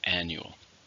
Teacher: How many syllables are in annual? 3. Stress on the first.